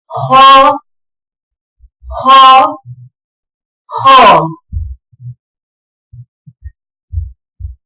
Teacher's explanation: خا، موٹا پڑا جائے گا، حلق کے شروع حصے سے ادا ہوتا ہے، حلق میں رگڑ لگتی ہے۔